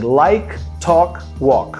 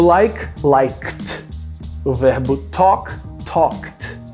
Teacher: Primeiro, eles são verbos regulares. Segundo, eles terminam com o som k. É um som que não vibra essas pregas vocais. Logo, a gente precisa de colocar esse verbo no passado e esse som, ele também não pode vibrar.